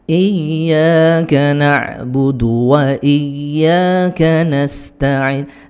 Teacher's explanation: Nas itu meringiskan supaya tidak seperti shad nas ya, nas meringis saja supaya sinnya sempurna.